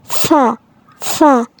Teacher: উচ্চারণের সময় কিছুটা বাতাস বের করে দিতে হবে।